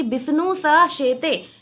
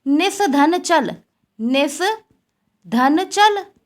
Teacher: जो दंत सा जो है वह तालव्यसा में परिवर्तित हो जाएगा